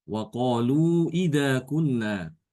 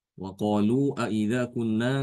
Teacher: Ya, jadi bukan nanti diganti dengan bukan aida tapi ida, ya. Jadi hamzanya dibuang, hamzah istifhamnya dibuang, diganti dengan waqalu ida kunna, ya.